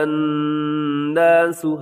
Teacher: وقود، وقودها الناس، الناس میں پھر آپ کو نون مشدد نظر آ رہا ہے، تو یہاں بھی آپ نے غنہ کر دینا ہے، آواز کو ناک میں لے جانا ہے